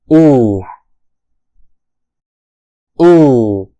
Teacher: This sound is similar to the English oo, but pronounced with the tongue moved backwards. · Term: back vowel